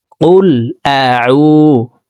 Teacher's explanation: আইন হরফকে হলকের মধ্যখান থেকে উচ্চারণ করব।